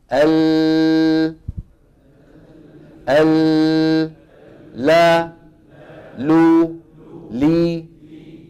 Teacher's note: هذا الكلام لما بنتكلم على صفه الانحراف اذا اللام امرها سهل من ادنى حافه اللسان الى منتهاها من الطرفين فوق الضاحك والنابي والرباعيه والثنيه